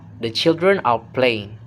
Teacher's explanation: Okay, the part one is the pre-head, and this is any unstressed syllable before the first stress in the tone unit. So it's spoken at a low flat pitch like a quiet runway before takeoff. · The word the is the pre-head, low, low and quiet, just setting things up.